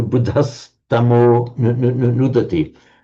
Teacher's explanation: the ah becomes an o before a voiced consonant